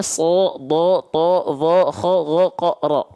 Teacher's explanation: kalau huruf tebal ketika fathah bunyi vokalnya menjadi o